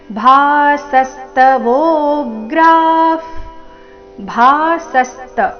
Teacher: ಭಾಸಸ್ತ ಭಾ ಮಹಾಪ್ರಾಣ ದೀರ್ಘ ಮುಂದಿನ ಸ ಮೇಲೆ ಆಘಾತ